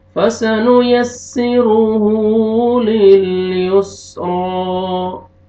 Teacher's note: रा को मोटा करके पढ़ेंगे, फतहा अलिफ सगीरा, एक अलिफ के बराबर आपने खींचना है